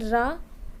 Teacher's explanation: तो लुंठित तथा लोड़ित की बात की जाए तो इसमें मुख द्वार जीभ की नोक से शीघ्र ही बंद होता है और 2-3 बार खुलता है, यथा जैसे मतलब कह सकते हैं रा, ठीक है।